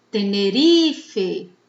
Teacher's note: a palavra Tenerife tem a penúltima sílaba mais forte, então é uma palavra grave, tá?